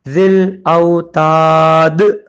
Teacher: ملا بھی سکتے ہیں، ملائیں گے تو ذل اوتاد الذین پڑھیں گے لیکن رک جائیں گے تو دال پہ جزم آئے گا اور کلکلا کریں گے